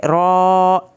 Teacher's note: खड़ी ज़बर को आपने एक अलिफ से थोड़ा कम और ज़बर से ज़्यादा पढ़ना है। जैसे ये रॉ के ऊपर ज़बर, खड़ी ज़बर है ना, इसको हमने रॉ इस तरीके से पढ़ना है।